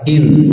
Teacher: Nun bertasdid tahan sekitar dua harakat cara menghitungnya setelah melafalkan in ya setelah itu baru ditahan dua